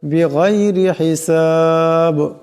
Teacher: বিগাইরি গানকে মোটা আওয়াজে পড়তে হবে, রাকে পাতলা আওয়াজে পড়তে হবে। হিসাব এখানে দমসালে বা সাকিন হয়ে যাবে, আওয়াজের টক্কর খাবে।